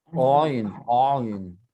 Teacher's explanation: c'est une gutturale sonore difficile à prononcer. Elle vient de la gorge.